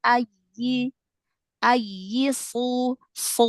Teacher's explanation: Huruf shad yang domah ya. Ee ditebalkan lagi. Jadi biar enggak seperti huruf sin ya.